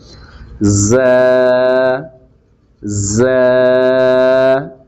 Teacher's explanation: ز ادا ہوتا ہے زبان کی نوک اور دونوں دانتوں کے اندرونی حصے کا کنارہ